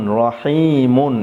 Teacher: আমি র পুর করে পড়েছি, অর্থাৎ মোটা করে পড়েছি, রা পড়ি নাই, র পড়েছি।